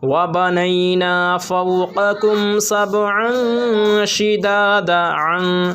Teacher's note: وَبَنَيْنَا فَوْقَكُمْ سَبْعًا شِدَادًا، عن اس پہ غنہ ہوگا، اخفا ہوگا، اس لیے کہ دو زبر تنوین کے بعد حروف اخفا کے 15 حرفوں میں سے شین آ رہا ہے